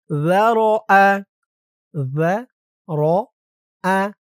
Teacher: যারআ যারআ যাল এই জালের উচ্চারণটা একদম নরম হবে। যা জিহ্বার মাথা উপরের দাঁতের মাথার সাথে লাগবে।